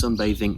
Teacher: It's that TH sound many English learners finding difficulty with. The TH sound, it is voiced in this case, okay? So we're using our throat and our voice in order to convey the th. So it's sunbathing, okay? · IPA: /ð/